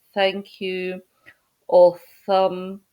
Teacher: it's actually a th sound but with a little bit of a hiss in it